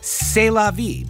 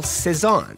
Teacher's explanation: in French, the C sound went even a step further when followed by an E, all the way to sa. This is even easier on the mouth.